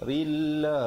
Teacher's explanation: ra di situ dibacakan nipis ya, bertemu dengan lafzul jalalah. Lafzul jalalah juga dibacakan nipis dengan kadar panjang.